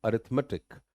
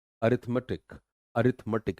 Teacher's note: रिथ पे जोर है, अरिथमेटिक, अरिथमेटिक, मेटिक नहीं है। आप ये देख रहे हैं ई वाले साउंड में यू एच आ रहा है, तो इस चीज का ध्यान रखना है।